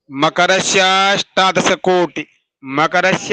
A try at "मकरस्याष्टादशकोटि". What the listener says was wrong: पर अ क्यों ला रहे हो? मकरस्या बोल दिए तो अ क्यों बोल रहे हो? मकरस्याष्टा मकरस्याष्टा